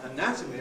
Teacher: when we have the noun anatomy where the stress is on the second syllable of the stem we get a strong vowel in that